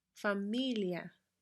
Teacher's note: right do so the words that don't contain the accent mark form what we call a diphthong between the I and the A and we pronounce them together as one syllable